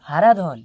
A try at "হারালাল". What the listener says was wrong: হারাধন নয় স্যার, হারালাল, হারালাল। আবার ধন ধরছেন, ধন ছাড়ুন, ধনটা কেটে লাল করুন।